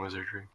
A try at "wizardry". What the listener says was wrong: You keep saying Wizawee.